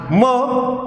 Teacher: closure of two lips and the air passes through the nose and so they are known as nasal sound mo as in